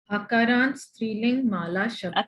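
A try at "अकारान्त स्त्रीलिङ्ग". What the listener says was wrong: Striling will not happen. Strilinga. Ga. Full. Ta full. Ga full.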